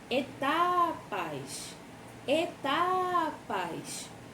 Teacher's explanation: Qual foi a sílaba que a gente mais puxou? O tá. Então, ela é uma paroxítona, certo?